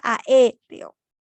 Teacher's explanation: La mayor fuerza de voz recae sobre la antepenúltima sílaba.